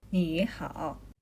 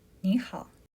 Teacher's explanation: So native speakers have a shortcut. The first word changes to a rising second tone.